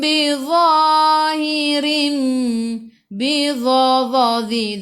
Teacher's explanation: ujung lidah keluar pada gigi depan sedikit sahaja. Dhadhi, sikit sahaja.